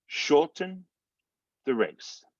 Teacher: the word shorten has two syllables the first syllable is is stress so you get more of that oh sound sure and then